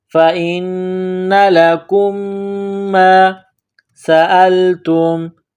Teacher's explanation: سین میں سیٹی کی آواز پیدا کرنی ہے · غنہ کریں گے، لکم، لام زبر لا، کاف میم پیش کم، میم ساکن کے بعد دوسری میم ہے جو مشدد ہے تو آواز ناک میں چھپائیں گے، غنہ کریں گے